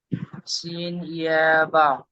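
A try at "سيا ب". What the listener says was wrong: জি, টান দেন, টান হচ্ছে না আপনার। বা।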